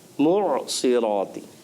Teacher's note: معصراتی حمزہ محسوس ہو رہا ہے، تو آپ تھوڑا سا زور دیں عین پر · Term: عین کی ادائیگی